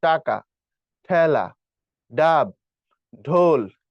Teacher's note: ট ঠ ড ঢ এ পর্যন্ত যেখানে হিট করে ওটাকে মূর্ধা বলে। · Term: মূর্ধন্য